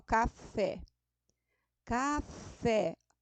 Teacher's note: a sílaba tônica é a última olha lá o café café o fé é a sílaba tônica